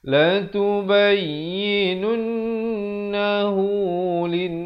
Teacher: Sekali lagi kita jumpa nun sabdu, dengungkan dua harakat. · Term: wajibul gunnah